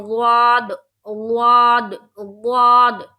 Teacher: واد کو منہ بھر کے نکالیں گے اور زبان کی کروٹ کرتے ہوئے نکالیں گے